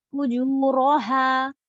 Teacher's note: رو heavy لیکن ہا بالکل سیدھا